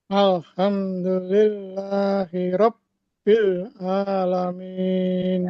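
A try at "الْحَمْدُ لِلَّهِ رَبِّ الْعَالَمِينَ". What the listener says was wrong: Bilnya jangan sampai terlalu tebel. Bil, bukan bil. Rabbil Rabbil alamin. Ini memang kalau Quran tuh harus awas mana yang tebel, di depannya tipis langsung harus awas. Rabbil alamin, bukan Rabbil gitu ya.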